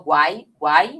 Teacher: o U é uma semivogal, porque ele tem o som mais fraco